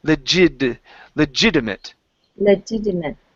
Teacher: use a D sound instead of a t